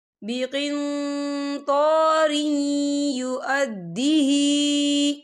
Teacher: تو یہاں پر ادغام ہوگا، تو ہم یہاں تھوڑا سا غننے کے ساتھ پڑھیں گے